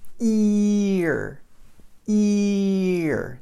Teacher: The E, the position of your tongue way up at the top, the E sound is almost the exact same position as the R sound. So if I'm saying E and then I just move my tongue back a little bit, I get R, right? Ear, ear.